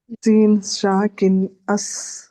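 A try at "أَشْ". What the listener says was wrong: नहीं, ये अश है, शीन से ना, शीन और सीन में थोड़ा फर्क होता है, ठीक है, ये इंशाल्लाह हम सीखेंगे।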